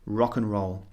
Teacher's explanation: the and just becomes a very very short sound